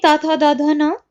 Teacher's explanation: तवर्ग में त थ द ध न, ला का और सा का, इनका उच्चारण स्थान क्या होता है? दंत।